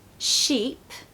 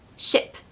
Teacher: when we have a long vowel like double e we really need to make sure that we elongate our voice on that particular part of the word